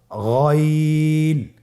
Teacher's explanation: হারাফটি উচ্চারিত হয় কন্ঠনালীর শেষ ভাগ হতে · গাইন হরফটি মোটা হারাফ অবশ্যই একটু মোটা করে বলতে হবে